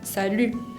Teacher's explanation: si tengo la palabra salut sola, se acentúa en la U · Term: acento tónico